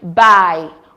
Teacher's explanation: The first diff tongue we have here is the diff thong I. It starts with the mid open midback vowel A and glides to the closed front vowel E.